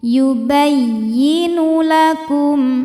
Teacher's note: tidak perlu ditahan, cukup kita naikkan intonasinya atau disebut dengan nabr